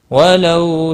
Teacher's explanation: وَلَوْ واولین ہے، تھوڑا نرمی کے ساتھ کھینچ کر ادا کریں گے. شاء مد متصل ہے، چار الف کے برابر کھینچ کر پڑھیں گے. اللہ کا لام پر پڑا جائے گا زبر کی وجہ سے، اور اس کے اوپر کھڑی زبر بھی ہے، ایک الف کے برابر کھینچ کر پڑھیں گے.